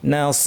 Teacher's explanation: এক আলিফ টেনে থামতে হবে